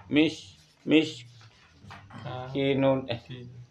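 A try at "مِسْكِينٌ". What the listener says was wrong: kinya panjang kinya ki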